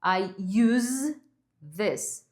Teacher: Ela pode ser pronunciada como use, com esse sonzinho de Z no final